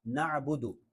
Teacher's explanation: مالکی یوم الدین، ایاک نعبد، اس کو نعبد پڑھنا یہ درست نہیں ہے، عین ہے تو اس کو واضح کرنا ہے نعبد، اور حمزہ کی طرح جھٹکا بھی نہیں دینا نعبد، بلکہ عین ہے، حلق کے درمیان سے ادا ہوتا ہے